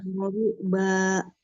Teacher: tapi ketika di fathah kan dibuka, tidak ada penambahan hamzah sukun gitu